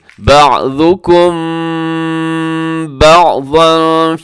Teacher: اخفا کریں گے، آواز کو ناک میں چھپائیں گے میم ساکن پہ